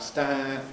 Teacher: there is a little bit of nasalization at the end of the vowel. Lips come together, jaw comes up with them, stand.